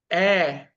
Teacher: ए में जीभ बिल्कुल बीचो बीच जाती है